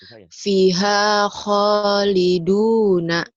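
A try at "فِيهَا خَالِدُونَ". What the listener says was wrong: P-nya panjang atuh. Fiha khaliduna.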